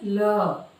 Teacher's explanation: हवा की जिह्वा के किनारे अर्थात जिह्वा के पार्श्व से होकर निकलने से पार्श्विक ध्वनियां उच्चारित होती हैं।